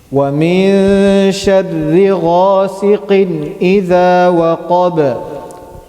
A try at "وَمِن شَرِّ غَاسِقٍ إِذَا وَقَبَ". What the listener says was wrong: We have to make sure the qaf that we're pronouncing is heavy. غاسقٍ. It should not sound like غاسقٍ, right?